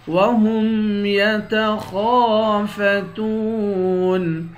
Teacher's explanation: خا کو موٹا پڑھیں گے، خا کے بعد الف ہے، اس الف کو ایک الف کے مقدار کھینچ کر پڑھیں گے، تا کو واو کے ساتھ ملا کر واو کو ایک الف کے مقدار کھینچ کر پڑھیں گے، آخر میں نون ساکن ہے۔